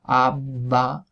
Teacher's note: mientras que con a va pues se mantiene la vibración durante todo el tiempo · Por eso casi mejor que probar con pa, es mejor probar con a pa y decirlo un poco despacio para comprobar efectivamente el cese de la vibración, mientras que con a ba pues se mantiene la vibración durante todo el tiempo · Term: oclusiva sorda y sonora